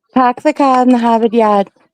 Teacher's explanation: So you don't say R and you drag your vowels. You're supposed to drag your vowels.